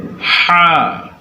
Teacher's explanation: হা কণ্ঠনালীর মধ্যখান থেকে